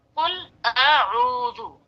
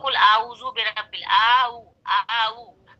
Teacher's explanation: और एक चीज हम बता रहे थे कि अ और ऊ में फर्क होना चाहिए अदायगी में। एक तो अक्साए हलक से निकलेगा अ, हमजा है, ऊ वस्ले हलक से, तो दोनों की अदायगी में फर्क होना चाहिए।